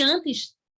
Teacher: Ele não tem som de N, ele serve para nasalizar a vogal anterior. Então, aqui, ó, em antes, não tem dígrafo.